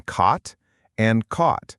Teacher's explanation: >> This is called the cotcott merger and it's very common for many Americans. There's no difference between the vowel in cot and caught. They both use that open a sound.